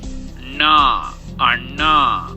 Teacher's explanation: a set of retroflex consonant where the tongue curls back to produce sounds · This sound is known as a voiced retroflex nasal.